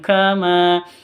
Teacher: tanwin bertemu dengan Kaf tanwin bertemu dengan Kaf samar didengungkan